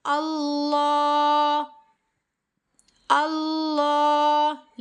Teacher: लाम को एक अलिफ की मिक़दार के बराबर खींच कर पढ़ना है